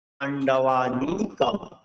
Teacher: অনুসারকে উচ্চারণ করবো, ময়ের অর্ধেক, সম্পূর্ণ নয়।